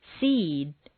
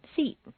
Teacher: Seed takes longer to say than seat · a final voiced consonant causes the previous vowel to double